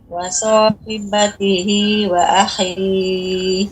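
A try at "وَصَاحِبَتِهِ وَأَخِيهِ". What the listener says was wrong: Haknya lebih diperjelas lagi. Wa sahibatihi wa akhi. Ha, ya, ha. Wa hi.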